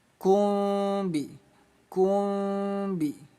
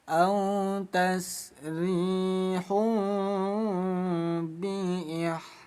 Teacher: Dhammatain bertemu ba, hukumnya iklab, dibaca samar dengung, 2 ketukan.